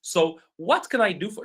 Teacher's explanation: my intonation goes up. My voice goes up.